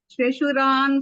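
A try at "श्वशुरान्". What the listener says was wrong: మీరు శశు అంటున్నారు. అలా అనద్దు. శ్వశు అనండి. వావొత్తు కూడా ఉంది కదా.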